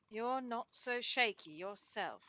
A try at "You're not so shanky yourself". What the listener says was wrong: that's shanky. There's an N there.